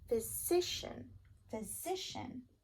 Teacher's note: You should hear stress on the si,